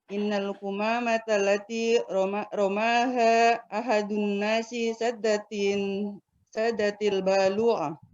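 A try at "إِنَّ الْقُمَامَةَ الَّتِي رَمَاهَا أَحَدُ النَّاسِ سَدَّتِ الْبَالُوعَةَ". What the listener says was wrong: Mumtaz. Bagus.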